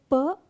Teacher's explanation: Put them at the vocal cords and utter the words. When you say p, there is no vibration. You say f, there is no vibration. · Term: voiceless consonants